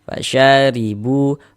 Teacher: Jadi kalau ada huruf ra memiliki harokat kasroh, baris satu di bawah huruf ini harokat kasroh namanya atau tanda baca kasroh. Huruf ra memiliki harokat kasroh, maka huruf ra dibaca tipis, dibaca tarkik.